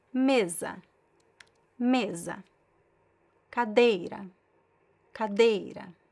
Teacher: So these follow the most common rule. The second to last is stressed.